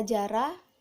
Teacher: bunyi J hidup, oral, maksud lamina palatal, dan juga afrikasi